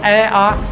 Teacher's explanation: अ आ दोनों कंठ से निकलते हैं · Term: स्वर